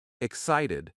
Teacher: We stress the second syllable.